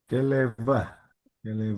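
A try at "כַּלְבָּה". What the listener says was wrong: Kal harus dihafalin sedikit ya. Sorry, kalba. Sorry, kalba ya. Caleb, kalba. Ada yang tahu kenapa ini dibaca bet? Kenapa bukan dibaca vet? Kenapa bukan kalva tetapi kalba? Karena dia setelah seva. Setelah seva ini dihitung mulai lagi. Ya, jadi dia wajib pakai bet di sini karena ini huruf sebelumnya adalah seva.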